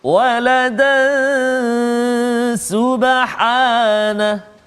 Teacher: tanwin bertemu dengan sin, iaitu ikhfa hakiki, dengung 2 harakat bacaan dia.